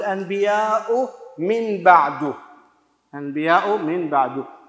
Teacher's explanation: مع مراعاة الغنة، مقدار حركتين حركتين